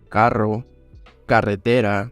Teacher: in Spanish we really roll the r